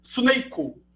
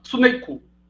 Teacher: Ele prefere, então, inserir um som de U depois desse S, é uma questão de convenção linguística, mas ele não insere o I, assim como o brasileiro faz. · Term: epêntese